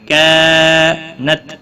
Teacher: نون ساکن کے بعد حروف اقفا کا کاف ہے، اقفا حقیقی ہوگا، گنہ کے ساتھ پڑھیں گے۔ کانت، الف مدہ ہے، 1 الف کے برابر کھینچ کر پڑھیں گے، تا ساکن کو ہلانا نہیں